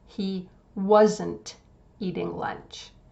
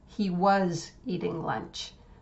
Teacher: make sure if you use the contraction that you say the T sound clearly at the end, because otherwise it will sound just like he was eating lunch.